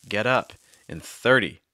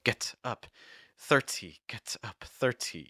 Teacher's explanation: they use what's called a fast D or a flap T sound. Notice that I'm not saying get up or 30.